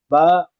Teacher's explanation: دونوں ہوٹ مل کر با ادا ہوگی، اور جو اندرونی حصہ ہے ہوٹوں کا تلی والا، اس کو ملائیں گے با ادا ہوگی.